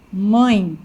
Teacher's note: Agora, quando o meu ditongo é nasal, parte desse som sai pela boca e parte pelo nariz. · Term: ditongo nasal